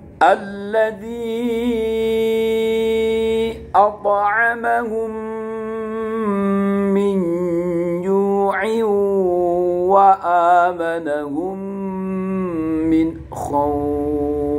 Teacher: Hukum bacaannya, mim dilebur menjadi satu. Ketika menjadi seperti satu seperti itu, maka kayak mimnya ada tasdidnya, sehingga kalau mim bertasdid dibaca gunnah, kayak nun sukun apa nun, kayak idgham biguna, langsung melebur. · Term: idgham mimmi